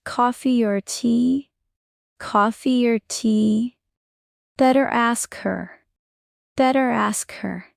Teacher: R linking, especially in American English.